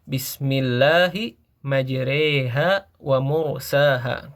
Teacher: Imalah itu adalah kondisi di mana suatu huruf berharokat fathah, namun kita membacanya condong ke arah kasroh ya. Jadi suara bunyinya itu seperti huruf e ya.